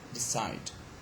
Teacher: the second or the final syllable is stressed. Why? Because it has got a diphthong.